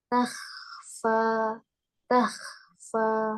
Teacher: Oh ya, Ustazah. Taknya fokus dulu, tipiskan, kemudian ke huruf kha tebal, fa-nya tipis lagi.